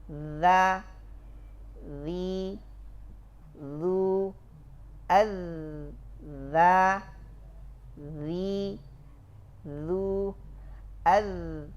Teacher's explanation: Kaifiyatu nutqi biha yajibu mura'atu jarayanus sauti wa habsin nafas. Fitrahnya zal, ya, tabiatnya zal, tertahan nafas mengalir suara.